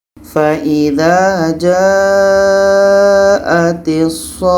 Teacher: Ini mat lazim kilmi mutsaqqal, panjang 6 harakat.